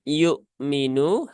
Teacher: hamzahnya dia punya syiddah maka ya tunaikan syidahnya ya yuk jangan disamarkan hamzahnya